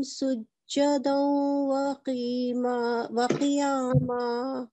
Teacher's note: We have to do partial assimilation on this waw mushaddad.